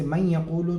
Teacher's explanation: لیکن اگر ادغام ناقص ہو، جیسے من یقولو، تو نون کا نام لیا جائے گا ہجے میں، چونکہ پڑھنے میں بھی نون کی آواز آ رہی ہے۔ ظاہر ہے کہ من یقولو میں یا کے اندر جو غننے کی آواز ہے وہ یا کی نہیں ہے، وہ نون ہی کی ہے۔ جب نون کی آواز آ رہی ہے تو ہجے میں نون کا نام لیا جائے گا، لہٰذا من یقولو کے ہجے ہوں گے میم نون یا زیر مین۔